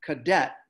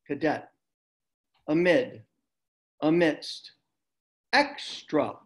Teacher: a has an uh sound like in cadet notice in cadet the debt is accented